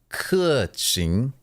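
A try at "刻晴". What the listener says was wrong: It's not like thin ch. It's like through the teeth.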